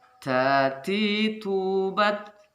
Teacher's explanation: Maka ada makmus di sana nanti, suara desis sedikit yang bisa didengar oleh kawan di samping kita